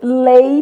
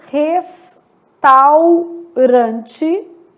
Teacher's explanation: Decrescente, vogal mais semivogal.